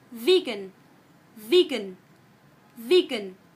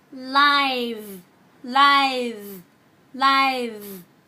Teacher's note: đối với âm V thì các bạn chỉ cần rung dây thanh quản của mình lên, bởi vì hai âm này được tạo ra bằng cách như nhau.